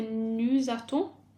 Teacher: Then for nous attend, because we've got a consonant at the end and a vowel at the beginning, we join them with a Z sound